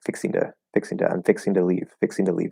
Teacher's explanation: the normal thing we might do is change the T into more of a D